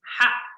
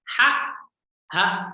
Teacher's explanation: Tipis dan tebal. Kalau ha itu kayak slim, ya, tipis. Ha. Sedangkan ha itu tebal karena dari dada.